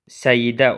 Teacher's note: Səidə sözünün tələffüzündə səidə olur. Yəni y artırılır.